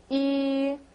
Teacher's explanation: Now, E has a funny pronunciation. It's almost like you're saying ew, but you have to keep your mouth in like a tunnel shape. So you'd say E, like you're going to blow a whistle, but with the bigger opening in your mouth.